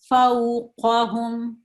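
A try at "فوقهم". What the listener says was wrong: قاف تھوڑا سا اور زور لگائیں.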